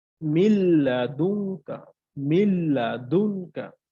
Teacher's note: নুন সাকিনের পর আমার লাম আসছে সো আমাকে গুন্না ছাড়া মিলিয়ে পড়তে হবে